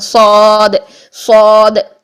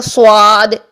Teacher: آپ آ کی ساؤنڈ رکھیں گے، صاد خود بخود موٹا ہو جائے گا